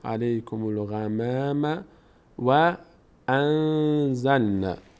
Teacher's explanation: میم میچسبه به این لام چون الف خونده نمیشه. علیکم الغمام، میم پر خونده نمیشه.